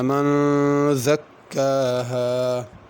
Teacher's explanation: من زکاها جلدی سے نہیں پڑھنا بلکہ من پہ غنہ کرنا ہے